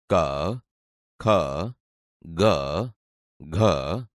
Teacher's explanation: તમે જોશો કે તે ગળામાંથી બોલાય છે તેથી આ કંઠ્ય વ્યંજન છે